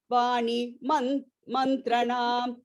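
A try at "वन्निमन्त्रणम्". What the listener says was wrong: Vanni, not Vani. Vanni mantranam.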